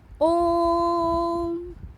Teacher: जब हम ओम शब्द का उच्चारण करते हैं तो हमें ह्रस्व स्वर और दीर्घ स्वर की अपेक्षा इसके उच्चारण में और 3 गुना समय अधिक लगता है। प्लुत स्वर का प्रयोग हिंदी भाषा में नहीं किया जाता है, यह प्रायः संस्कृत में ही किया जाता है।